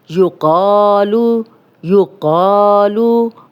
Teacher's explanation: قاف موٹا پڑھیں گے، الف مدہ بھی ہے، 2 حرکات لمبا کریں گے، اور اگر ہم یہاں پہ سٹاپ کریں گے تو پیش ہے اور جزم لگ جائے گی لام پہ، یقال، یقال۔